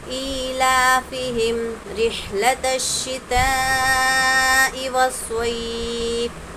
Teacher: ہا اچھے سے ادا کریں گے، حلق سے ہوا نکلنا چاہیے۔ حروف مدہ کے بعد حمزہ اسی کلمے میں ہے، مد متصل کا قاعدہ ہوگا، 4 یا 5 الف کی مقدار ہم یہاں پر مد کریں گے۔